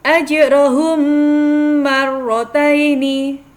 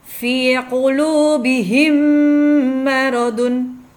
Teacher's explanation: mim sukun bertemu dengan huruf mim maka dibaca dengung